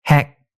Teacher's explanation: This vowel had a slightly higher tongue position than English's as in heck.